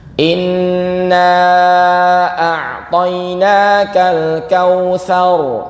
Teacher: Terus ada ain, agak ditekan ke bawah, jangan ke hidung. Karena ini bukan hamzah, jangan dibaca a'toina, bukan, tapi seperti ini.